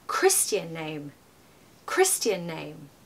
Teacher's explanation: I'm even putting more stress on Christian and less stress on name, because Christian is the most important bit to stress in those two words, because that's the particular type of name we're talking about.